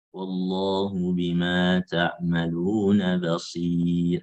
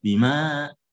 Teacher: tidak ada penekanan di ma-nya.